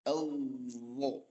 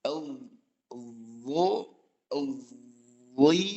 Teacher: Jadi lidahnya itu nggak diem, Pak, nggak diem menempel di tempat, tapi maju ke makhraj lam. Kalau makhraj lam itu di ujung lidah bertemu dengan gusi atas langit-langit. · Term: istitolah